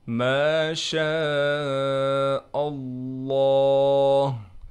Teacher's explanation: حمزہ کو ڈائریکٹ ہم لفظ اللہ کے لام سے ملائیں گے، اور لفظ اللہ کے لام کو ہم نے موٹا پڑھنا ہے۔ ما شاء اللہ، آخر میں ہا کو بھی صاف کر کے ادا کرنا ہے۔